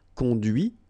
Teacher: final T is not pronounced